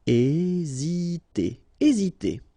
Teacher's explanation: remember that H doesn't exist, so we don't pronounce it, and the first thing you will pronounce is this vowel here, E accent aigu, E.